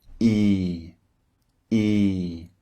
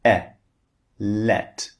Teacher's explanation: the first one is long and the second one is short · the shape of the mouth is very similar the difference is one is long the other is very very short